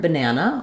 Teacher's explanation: the a vowel in this middle syllable that syllable has the primary stress the other syllables · So in the word banana, you see we have the letter A 3 times, but we only say a clear vowel, the A vowel, in this middle syllable. That syllable has the primary stress.